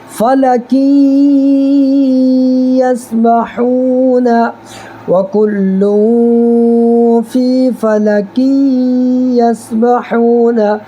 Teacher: آخر میں نون کی آواز آ رہی ہے، اسی کو ناک میں چھپانا ہوتا ہے